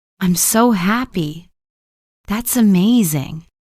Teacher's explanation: falling intonation when your voice goes down at the end for statements or strong emotions.